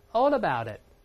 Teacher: 中间这个字母▁T▁浊化了最后这个▁T▁听不到失去爆破